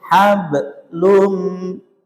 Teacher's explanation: Jadi kalau dia posisi huruf qalqalah di tengah tidak boleh diputus pantulannya tapi disambungkan ke lun.